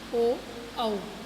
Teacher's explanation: कंठोष्ठ यानी कंठ और ओठ, यानी कंठ और होठ से बोले जाते हैं